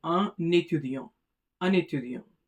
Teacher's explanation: Not only the accent aigu is present, but also the liaison takes place. That is, the N gets connected with E, and therefore it sounds like un étudiant. Un étudiant.